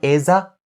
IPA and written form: ɪ-zə (is a)